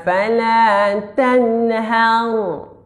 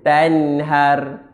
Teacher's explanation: Tebal lah. Sebab sebelumnya baris atas. Dinamakan ra tafkhim.